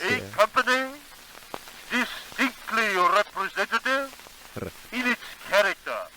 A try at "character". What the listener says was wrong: Character. No, the short vowel is a full e. Character. Almost sounds Kiwi or Australian up to only that word I meant.